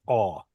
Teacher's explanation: The Masoretic scribes pronounced kamatz and kamatz katan exactly the same. They pronounced them both as aw. In fact, they made no distinction.